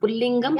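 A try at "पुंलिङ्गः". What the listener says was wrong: Lingam is just the, it is Lingaha, not Lingam. Lingaha. It is Linga. The word Linga also is in Pullinga.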